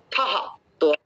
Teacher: দেখেন ত আর থ, দুটো থটা কিন্তু একটু জোরে বাতাস তাড়িত করতে হবে।